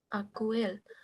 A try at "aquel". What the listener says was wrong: by the way, এটা হচ্ছে আকেল। হ্যাঁ কিউ এর পরে স্প্যানিশে কখনো অ্যাকচুয়ালি ইউটা উচ্চারণ হয় না। তবে আরেকটা জিনিস মনে রাখতে পারেন, এটা মনে রাখার জন্য, সেটা হচ্ছে যে উপরে দুইটা ডট থাকে বেশিত, এই দুইটা না থাকলে কখনোই ইউটা উ হবে না, অলওয়েজ ওই যে একসাথে মিক্স হয়ে যাবে, এ হয়ে যাবে।